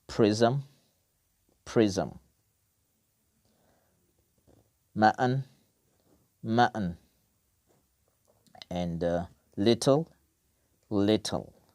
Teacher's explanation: consonant sounds, but they function like syllables